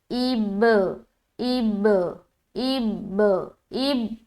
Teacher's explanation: हमज़ा को बा से मिलाएंगे तो हमारी आवाज़ मिलकर जुदा हो जाएगी और कलकला पैदा होगा। ऐसा लगेगा कि आवाज़ टकरा रही है, डबल डबल साउंड मालूम होगा।